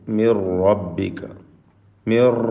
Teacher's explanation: മിൻ എന്നതിലെ തൻവീനിനെ സാക്കിന നൂനിനെ പൂർണ്ണമായും റായിൽ ലയിപ്പിച്ച് മണിക്കാതെ ഉച്ചരിക്കുക. ഇത് ബിഗൈരി ഗുന്ന, റായിന് തഫ്ഖീം കൊടുക്കുക. · മിർ റബ്ബിക മിർ എന്നിങ്ങനെ റായിന് വിറയൽ വരുന്നത് സൂക്ഷിക്കണം. തക്രീർ സൂക്ഷിക്കേണ്ട സന്ദർഭമാണ്. ഷദ്ദുള്ള റാ. മിർ റബ്ബിക ഹുവൽ ഹഖ്, ഹുവൽ ഹഖ്, ഹ ശേഷം ഖാഫ്.